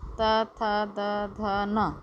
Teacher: ता वर्ग में है, इनका उच्चारण स्थान है दांत।